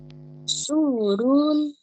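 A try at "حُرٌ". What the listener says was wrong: Hu run. This is not su. Ha ha.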